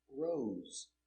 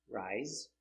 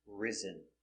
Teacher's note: all words have s between two vowels pronunciation with a z zebra sound